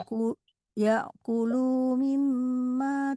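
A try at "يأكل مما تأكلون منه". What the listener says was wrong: Dipendekkan. Yakulu lunya pendek. Yakulu mimma.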